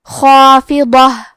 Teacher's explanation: تو کیونکہ اس کے پہلے حرف الخا ہے تو ہمیں مد الف کو بھی بھاری آواز میں ادا کرنا ہے · یہاں حرف الضاد ہے. ضاد کی ادائیگی زبان کے کروٹ اور اوپر کے داڑھوں کے جڑ سے ہے. ضاد حروف التفخیم میں سے ہے تو ہم یہ حرف کو موٹی آواز میں پڑھیں گے.